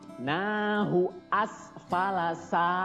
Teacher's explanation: sa-nya dibaca panjang 2 harokat, namanya mad tobi'i